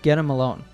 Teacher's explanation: The T at the end of get is pronounced with a flap T or D sound.